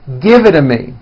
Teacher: when T's fall between two vowels, they become voiced and are pronounced as D's